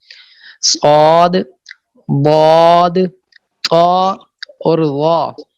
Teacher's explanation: ان حروف کے ادا کرنے کے وقت زبان کا بیچ اوپر کے تالو سے ملصق ہو جاتا ہے. لپٹ جاتا ہے. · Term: اطباق